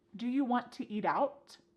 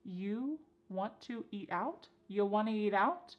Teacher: We've dropped the question word completely.